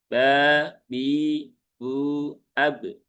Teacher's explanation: karena ba tidak ada sifat hames. Dia sifatnya jahar.